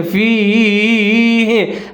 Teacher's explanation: آگے جائے لین ہے، تو تھوڑا سا اس کو لمبا کر کے پڑھیں گے